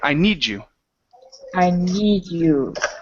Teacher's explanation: when you have a word that ends with a D and the next word starts with a Y, the D changes to a J sound. So instead of saying "I need you," it's "I need you" with a J.